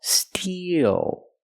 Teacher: we use the long e plus the dark L